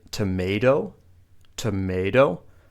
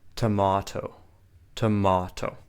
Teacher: the T sound in American English is more like a d a d but in British English it often stays like a t